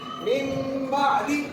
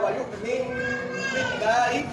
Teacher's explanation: جب بھی نون ساکن یا تنوین کے بعد حرف اقلاب با آ جائے تو ہم نون کی آواز کو میم میں بدل دیں گے